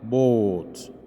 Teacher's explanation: This vowel is sometimes said to be over-rounded. الصوت ده أحيانا بنقول عليه إن إحنا بنعمل له استدارة زائدة عن الحد، i.e.